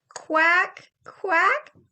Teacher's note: your tongue is up against the back of your mouth almost stopping the sound from coming through but then you can force the air through